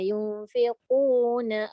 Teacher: Yung tu dah dengung tapi tak cukup panjang.